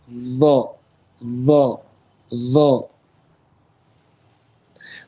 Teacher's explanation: It has the sifa of isti'la. It's a full mouth letter.